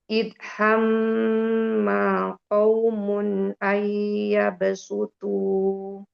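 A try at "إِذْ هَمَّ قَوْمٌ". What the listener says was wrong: Izhamma qawmun ayyabsutu. Huruf mimnya jangan umi ayun. Kalau umi ayun jadi hamma, jadi panjang. Izhamma qawmun. Jadi nggak di hamma qaumun.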